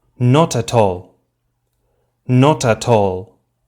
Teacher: look what happens with the T sounds they jump forward to the next word · the final consonant sound jumps forward and is pronounced together with the initial vowel sound of the next word, as if they formed one syllable. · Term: linking